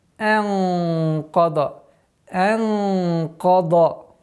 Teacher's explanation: Каф твердый звук, после которого идет дад, тоже твердый. Но ихфа здесь должно подчиняться звуку каф и должно быть твердым.